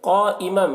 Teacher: قائمم، یہاں پر تنوین کے بعد با ہے تو تنوین کو میم سے بدل کر غنہ اخفا کے ساتھ پڑھیں گے، اس کو اقلاب کہتے ہیں۔